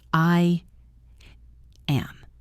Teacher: Or take the phrase I am. We add a little Y sound. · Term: intrusive sound